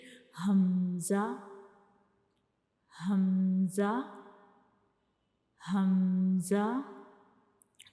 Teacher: हमजा जो है ये भी एक हरूफ हल्की है। तो ये हमारे हलक के यानी गले के सबसे नीचे वाले हिस्से से अदा होता है।